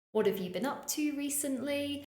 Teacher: we tend to use a more Rising intonation